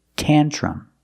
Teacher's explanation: Tantrum. The last vowel is a short sound like cup and up. Together, tantrum.